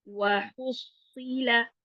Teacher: हम्म, अफला यअलमु इज़ा बुअसिरा मा फिल क़ुबूर वहुस्सिला, हुस्सी स्वाद जो है मोटा हरफ है, इसका ध्यान रखना, सीन बिल्कुल ना बन जाए, हुस्सी ना बन जाए।